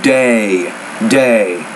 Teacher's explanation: When you say the word day, you need to pronounce that vowel longer.